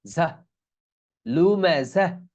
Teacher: জাহ, এখানে ঝা, এখানে তা আছে কিন্তু যখন থামতেছি তখন হা হয়ে যাচ্ছে।